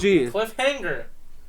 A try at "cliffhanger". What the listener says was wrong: You don't pronounce the G really hard. It's like a sound that you make in the back of your mouth. Cliffhanger. Cliffhanger. Cliffhanger. You're pronouncing the A.